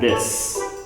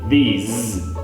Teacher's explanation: Another thing that will help you is the consonant sound at the end. Even though both words are spelled with an S, one sounds like an S and one sounds like a Z. So if you're talking about the singular, this, it's the short I with an S sound, this.